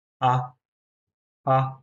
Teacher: Fourth টোনটাকে বলে falling tone, মানে উপর থেকে নিচে পড়ে যাচ্ছে।